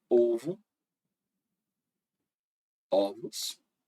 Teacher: aqui a vogal ela passou de fechada para aberta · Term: alternância